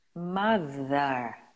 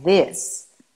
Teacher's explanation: Mas se você falar mother, tem a utilização das cordas vocais.